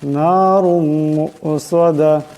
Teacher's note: রার উপর দুই পেশের তনবিন, এরপর মিম আসছে, ইদগাম হয়ে যাবে এবং ইদগামের একারি পরিমাণ গুণনা হবে।